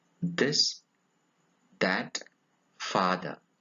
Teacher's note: it is a voiced dental fricative